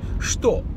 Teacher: even though it's spelled with a Che, it's actually pronounced with a Sh, like SH